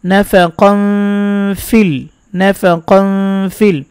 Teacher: ফায়ের দিকে গুণাটা চলে যাবে, আশা করি বুঝতে পেরেছেন, উচ্চারণ শুনেই গুণাটা অনেকটা ফায়ের দিকে চলে যাবে। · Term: ইকফা গুন্না